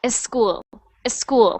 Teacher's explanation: I was hearing a little bit of an E before the S sound like a school a school so careful School perfect school good